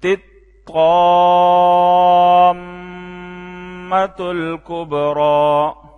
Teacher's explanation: مد کے بعد میم مشدد پہ غنہ کریں